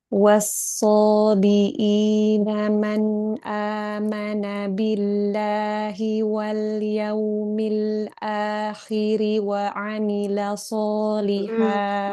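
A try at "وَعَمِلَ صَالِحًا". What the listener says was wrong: Mbak, wow, kadang wawnya kurang sempurna. Tarik ke moncongnya, agak kecil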